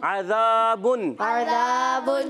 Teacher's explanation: ज़ाल की अदायगी जो होगी बगैर सीटी के, और ज़ा जो है वो सीटी वाला।